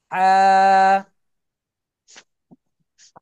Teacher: আ, গলা চেপে, এই যে হলকের মাঝখান থেকে গলা চেপে আওয়াজ বের করতে হবে